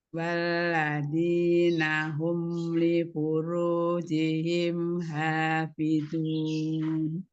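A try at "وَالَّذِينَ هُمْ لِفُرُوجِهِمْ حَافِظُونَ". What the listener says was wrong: Coba disambung nih wala ya. Wala, jangan diputus. Walladzi wala, ya nyambung ya.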